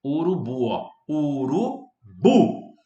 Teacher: A sílaba tônica é a última. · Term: oxítonas